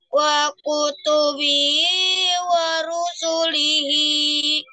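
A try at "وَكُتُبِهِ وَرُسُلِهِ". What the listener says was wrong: Ya, jangan sampai kepanjangan ya di tempat yang mestinya nggak panjang. Wa kutubihi wa rusulihi. Jadi yang panjang hi dua-duanya. Wa kutubihi wa rusulihi.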